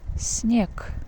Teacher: С Н we pronounce it снег. So voiced sound G becomes voiceless sound K.